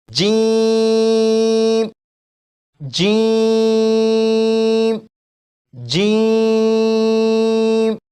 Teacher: جیسے ہی آپ جیم کو پڑھنا شروع کریں گے تو زبان کا درمیان کا حصہ اوپر تالو کے ساتھ چپک جائے گا